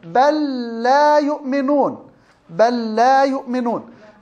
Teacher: اللام مع اللام أضغمت بسبب التماثل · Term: المتماثلين الصغير